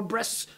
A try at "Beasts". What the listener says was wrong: It's actually Quivisionnaire, and it's still beasts. There's no R.